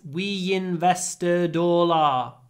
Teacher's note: no gaps because it's vowel vowel vowel · invest begins with a vowel and the stress is on the second syllable so in that case you really must use connected speech